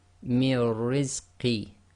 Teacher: So remember, we break the ra into two ras, one with sakin, one with sukoon, so making it sakin, and the second one with whatever the short vowel is on the shaddah. So we have one ra which is sakin, one ra which is with kasra, and we join the sound before to the first ra which is sakin. So we just have mir, and then the second one has its own sound, ri. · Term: ra mushaddad